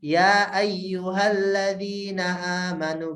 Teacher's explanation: Ya-nya harus pendek, harus 2 aja. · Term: jaiz